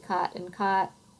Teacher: the strongest marker of this accent is the cot cot merger so to me cot and caught sound the same to a northerner they wouldn't